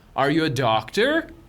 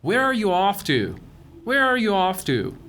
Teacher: Notice the falling intonation since this is an information question not a yes no question.